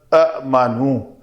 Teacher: تو امنو میں حمزہ ساکن جھٹکے سے ہم پڑھ رہے ہیں